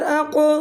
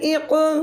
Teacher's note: قاف جو دو نقطوں والا موٹے حروف میں سے اس میں قلقلہ کیا جائے گا جب وہ ساکن ہوگا